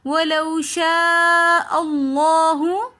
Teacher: لفظ اللہ سے پہلے زبر آ رہا ہے تو اس لیے ہم لفظ اللہ کو موٹا پڑھیں گے